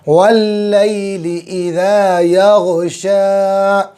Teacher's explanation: शीन अच्छे से निकालेंगे, ज़बान का बीच और ऊपर का तालु